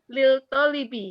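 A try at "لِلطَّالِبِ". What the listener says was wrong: Lit Iya, lamnya luluh. Lit jangan lil. Lit Iya, asyamsiyah. Lamnya tak terucap.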